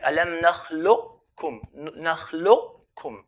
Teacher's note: Or we can pronounce it as giving the qaf its characteristic of heaviness without pronouncing the qaf and go straight to the kaf